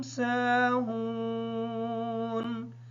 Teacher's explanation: سین کے بعد الف جو ہے وہ ساکن ہے، اس وجہ سے سین کو تھوڑا سا لمبا کر کے پڑھیں گے تاکہ الف صحیح طریقے سے ادا ہو جائے، اور واو بھی ساکن ہے اس وجہ سے واو مدہ ہے، اور ہا کو لمبا کر کے پڑھیں گے تاکہ واو بھی صحیح طریقے سے ادا ہو جائے، نون ساکن ہونے کی وجہ سے نون حالت وقف کی وجہ سے ساکن ہوگی۔